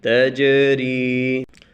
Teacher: تا جیم زبر تج، یہ جو بلیو نشان ہے، نیلا نشان ہے، اس پر ہم قلقلہ کریں گے. جیم ہے حروف قلقلہ میں سے ہے اور اس کے اوپر جزم یا سکون آیا ہوا ہے، اس پر قلقلہ کریں گے